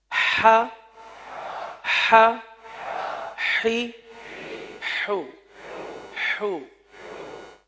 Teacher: इसका जो मखरज है वस्त हलक यानी हलक का दरमियान हलक का दरमियान यहां से यह हर्फ अदा होता है। तो पहले हर्फ की अदायगी फिर उसके बाद हरकत की अदायगी।